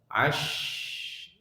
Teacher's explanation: shin termasuk dia huruf hamas dan rokhawah, dia mengalir nafas dan suaranya